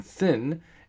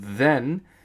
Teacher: th as in thin is unvoiced and as in then it's voiced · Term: voicing